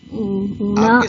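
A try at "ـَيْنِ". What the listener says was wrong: آپ کے سامنے جو لکھا ہوا ہے اس میں بھی ڈیش کے نیچے زیر لگا ہوا ہے، تو زیر کیسے پڑھتے ہیں آپ؟ اینا ہوگا نا پھر وہ.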